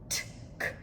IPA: p, t, k